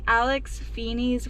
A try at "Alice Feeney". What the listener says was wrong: Alice Feeney. I think you said Alex.